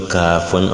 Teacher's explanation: Mais lorsqu'on dit Kafun, on lit librement sans être étouffé.